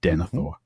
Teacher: The th is just one sound. And so that second last syllable is light. And so the stress goes on the third last